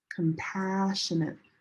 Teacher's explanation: This si is like sh.